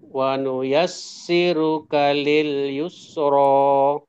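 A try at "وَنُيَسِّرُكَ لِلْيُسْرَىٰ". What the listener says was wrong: Nah, ru-nya masih ditebalkan ya. Wa nuyassiruka lil yusra.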